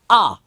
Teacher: जब आप आ बोलते हो तो पूरा मुख खुल जाता है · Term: विवृत